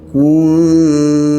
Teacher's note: Izhar syafawi. Bibir rapat sekejap.